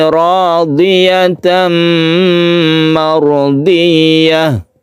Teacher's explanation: Di sini ada tanwin bertemu mim, ini idgham bi gunnah didengungkan.